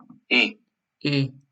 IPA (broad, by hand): ɪ